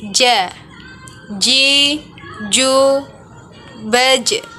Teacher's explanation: Huruf ini dilafalkan dengan menyentuhkan tengah lidah kita ke daerah langit-langit. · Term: huruf ja